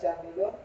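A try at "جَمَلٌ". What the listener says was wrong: Ah, bukan. Ada ya-nya kalau jamilun.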